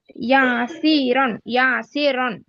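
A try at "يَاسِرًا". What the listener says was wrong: లేదు, ఇక్కడ దీర్ఘం ఎందుకు తీస్తున్నారమ్మా? యా ఫథా యా, ఇది కరెక్ట్.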